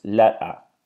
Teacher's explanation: the T is not pronounced so it is being completely replaced by a glottal noise or a glottal stop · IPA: [ˈleʔə]